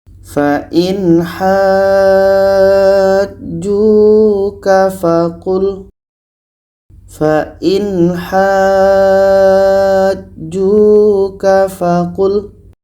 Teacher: Kita panjangkan 6 harakat baru masuk ke huruf yang ada tasydid. Panjangnya untuk mat lazim kilmi mutsaqqal 6 harakat.